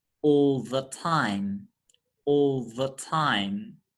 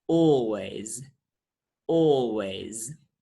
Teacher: the l sound is dark and at the same time it is dentalized · a dark l is a velarized l sound that is an l sound which is articulated with the back